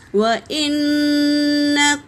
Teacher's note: واو حرکت ہے، حمزہ بھی حرکت ہے، نون پر تشدید ہے تو اس کا غنہ ہوگا